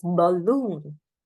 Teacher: right but it is balloon Bon now B is spoken quickly and loon is spoken for a longer period of time